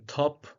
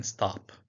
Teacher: the aspirated t in top versus the unaspirated t in stop